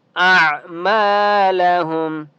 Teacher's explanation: عین کی آواز باریک نکالیں گے